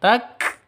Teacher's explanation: kafnya huruf harus ada nafasnya yang keluar